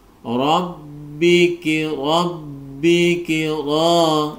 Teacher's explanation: kita perhatikan penggalan ayat berikutnya, ro berharokat fathah menjadi tebal.